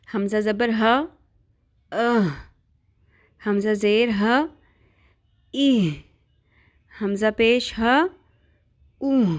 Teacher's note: ہا حلق کے اس حصے سے ادا ہوتا ہے جو سینے کی جانب واقع ہوتا ہے۔